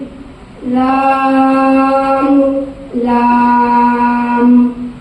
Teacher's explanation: لام کا مخرج کنارہ زبان مسوڑے سے مل کر لام ادا ہوتا ہے